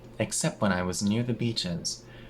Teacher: Except when that T at the end of except disappears. We just keep the P.